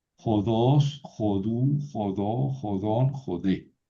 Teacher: Esta es una palabra aguda, oxítona, jodos. Por eso el acento no se mueve.